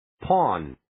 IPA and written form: pɔːn (Pawn)